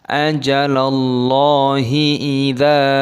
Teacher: dzalnya dibaca panjang, ada tanda alifnya mad tabi'i 2 ketukan.